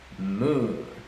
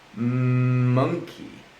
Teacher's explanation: I can feel the vibration on my throat because the letter M is a voiced sound.